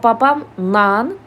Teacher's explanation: Məsələn, babam la yazılır, amma babam nan deyilir. Burda L hərfi N səsinə dəyişib. · Burada l hərfi n səsinə dəyişib. Baxın, babamla l hərfi burada n səsinə keçib. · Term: keyfiyyət fərqi